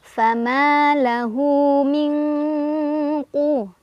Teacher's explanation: nun sukun dibaca samar-samar sambil berdengung, di mana tingkat kesamarannya lebih kecil dibandingkan dengungannya. Jadi lebih terdengar dengungannya, ya, lebih ang. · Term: ikhfa ab'ad